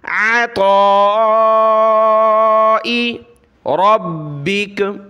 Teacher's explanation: طا کے اوپر مد ہے تو اس کو طا کو موٹا کر کے اس کو کھینچنا ہے